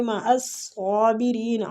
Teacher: ان اللہ مع الصابرین، ان نون مشدد پہ غنہ کریں گے، اللہ کے لام کو ادھر پور پڑھیں گے، مع الصابرین، عین وسط الحلق سے اور صاد مستعلیہ پور پڑھیں گے، کھینچیں گے بھی کھڑی زبر کی وجہ سے، آگے مد عارضی سکون ہو رہا ہے۔